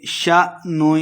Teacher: کا قاعدہ ہے، منہم یومئذ اخفا یعنی غنہ کریں گے، شأن حمزہ ساکن کو جھٹکے کے ساتھ پڑھنا ہے